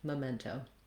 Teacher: our TO has the O diphthong, so make sure you're holding that long enough. That's usually pretty easy for people at the ends of words like toe. · just allow the O to be long enough that your jaw closes and gets more relaxed into the second part of that diphthong